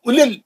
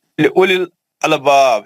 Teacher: एक मिनट, मध्य असली नहीं है, वाव पे जज़म नहीं है ना, वाव पे सुकून नहीं है, वाव साइलेंट है, सिर्फ पेश की एक हरकत। उलिल, जल्दी पढ़ेंगे, उलिल अलबाब।